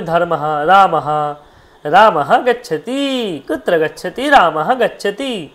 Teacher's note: বিসর্গটাকে অনেকে হের মত উচ্চারণ করে